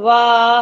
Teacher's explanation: वकारस्य दंतोष्ट, मतलब वकार किससे निकलते हैं, दंत और ओष्ठ, ये वह है, तो किसे दंत वह अपन बोलेंगे वाह, तो किसे दांत के दांत से अपने होठ टच हुआ, तो दंतोष्टा।